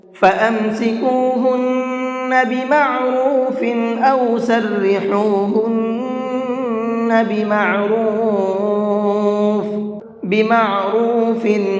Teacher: عین کو حلق سے نکال کر کے پڑھیں گے